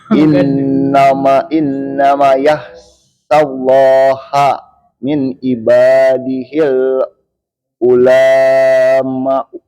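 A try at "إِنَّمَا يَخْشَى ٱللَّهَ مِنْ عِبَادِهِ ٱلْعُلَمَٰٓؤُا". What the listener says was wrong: Gimana bacanya? Ma-nya panjang ya.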